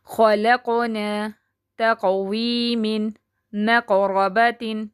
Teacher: خلقون، اس میں جو درمیان میں قلقلہ آ گیا ہے اس کو قلقلہ صغریٰ کہیں گے، یعنی کہ چھوٹا قلقلہ، اس پہ تھوڑی کم آواز اچھلے گی